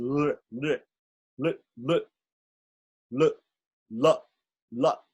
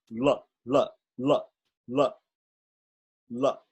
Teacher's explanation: It's a little hard to pronounce because the tongue is back in the throat.